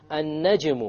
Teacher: Qalqala, because it's a silent jim and it's the lowest type.